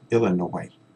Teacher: we don't pronounce the S